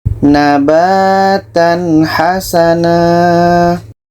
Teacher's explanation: bertemu ha ini izhar halqi harus dibaca jelas contoh nabatan Hasanah tanwin jelas ha jelas dan tidak ada dengung